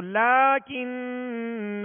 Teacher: لیکن اور وقف کریں گے تو لیکن. جب وقف کریں گے تو الف پڑھیں گے اور ایک الف کی مقدار میں کھینچ کر پڑھیں گے.